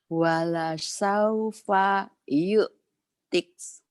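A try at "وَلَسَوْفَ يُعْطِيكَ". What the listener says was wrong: Ya, paknya jangan putus. Yu'tiknya kan jadi madlin. Jadi mad ada di sukun jadi panjang.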